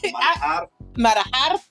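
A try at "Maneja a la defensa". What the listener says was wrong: Okay, you gotta roll your R a little bit. Manejar. A la defensa.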